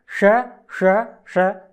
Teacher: षटकोण वाला श जिसका उच्चारण हम मूर्धा से करते हैं इसलिए इसको मूर्धन्य सकार कहते हैं